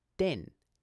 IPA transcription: dɪn